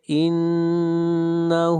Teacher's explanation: انہ، نون کے اوپر شد ہے، غنہ کریں گے · ہا کو کھینچ کر پڑھیں گے ایک الف کے برابر